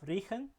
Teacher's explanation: Riechen, yeah, that's a high front long vowel this time